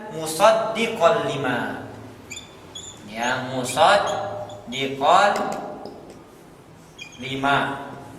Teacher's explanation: diidghamkan dimasukkan ke huruf lam tetapi tanpa gunah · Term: idgham bila gunah